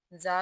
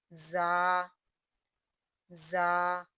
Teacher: زا سختی سے ادا کریں گے اور یہ حروف صفیریہ میں شامل ہے